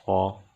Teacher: صاد کو موٹا کر کے پڑھیں گے، صاد چونکہ حروف مستعلیہ میں سے ہے